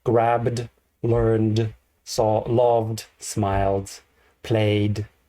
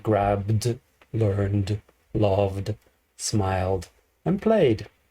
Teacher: um they are vibrating sounds so the vibrating sound continuous vibrating so you make the vibrating D sound